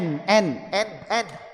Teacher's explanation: Na ini ada unsur huruf nun yang keluar salah satu sifat gunahnya dari alkasyum dan ada unsur harakat yang keluar dari aljauh. Maka saat mengucapkan na na itu n-nya pasti mau enggak mau keluar dari alkhaisyum